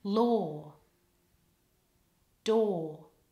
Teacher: The word law rhymes with door. The vowel there is or.